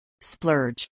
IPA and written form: splɝdʒ (splurge)